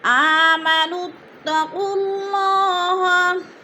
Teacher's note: اگر ساتھ ملانا ہے اگلے لفظ کے ساتھ تو پھر نون کو تا کے ساتھ جوڑ کر پڑھیں گے۔ · قاف کو بھی لام کے ساتھ جوڑ کر پڑھنا، ادغام کرنا ہے